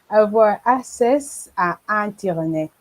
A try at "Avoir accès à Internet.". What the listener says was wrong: OK, is accès. Accès, not access, OK? Avoir accès à Internet. OK, avoir accès à Internet.